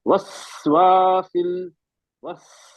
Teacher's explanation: सीन हमस है ना, सांस जारी रहेगी ना इसमें, हमस का मतलब होता है सांस जारी रहती है।